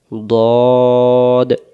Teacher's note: মারির দাঁতের গোড়া থেকে মোটা করে পড়তে হয়